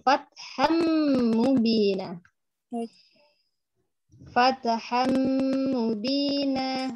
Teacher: Jadi huruf H dimasukkan langsung ke huruf mim. Harokat H-nya tidak usah dipanjangkan.